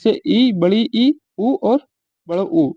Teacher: समृत स्वर को होते हैं मुख बहुत कम खुलता है, उनको समृत स्वर बोलते हैं